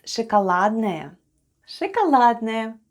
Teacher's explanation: Let's spell the word шоколадное. The first sound is sh, then goes o, it's unstressed and is pronounced as a. Then goes k, o, which is again unstressed and pronounced as a.